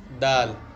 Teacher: دال، وہیں سے نکلتا ہے جہاں سے تا نکلا ہے، مگر تا اور دال میں فرق اتنا یہ ہے کہ تا میں زبان کا کنارہ لگتا ہے، دال میں تھوڑا سا زبان کا پچھلا حصہ بھی لگتا ہے